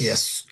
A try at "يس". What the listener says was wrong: ইয়াস back of the টাংটা আরেকটু উঠবে আর মাঝের পার্টটাও একটু উঠবে, হ্যাঁ? ইয়স, ইয়স, ইয়েস বলেন, যে সিন আর সদ বলেন ইয়েস আর ইয়স। আরেকটু ডিফারেন্ট করা লাগবে কি, ইয়স, ইয়স।